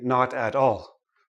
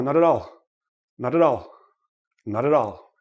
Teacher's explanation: when a word ends in a consonant and the next word begins in a vowel make sure you roll it in right roll the consonant into the vowel